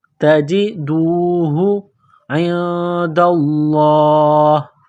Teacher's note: نون ساکن کے بعد دال ہے، حروف اخفا ہے تو یہاں آواز ناک میں چھپائیں گے، غنہ کریں گے، اس ناک میں آواز چھپانے کو اخفا کہتے ہیں۔